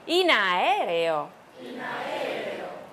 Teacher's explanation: In a 连在一起，好像一个字一样的。